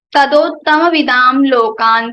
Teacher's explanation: Anuswara sound will be converted into La. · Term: La Anunasika